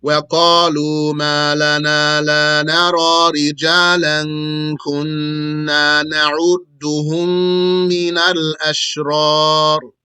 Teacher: From the front edge of the tongue come the lam, the noon, and the ra.